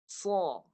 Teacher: Pangkal lidah tinggi tu nak tebal. · Tengah lidah kena naik sekali, tinggi sekali. Bagi bunyi dia tebal dan padu. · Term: huruf sad, itbaq